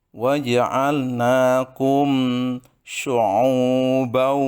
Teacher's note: mim mati bertemu dengan syin itu namanya izhar syafawi harus dibaca dengan jelas tidak boleh digunahkan Walaupun demikian tetap mengandung gunah tapi tidak didengungkan betul-betul waja'alnakum ya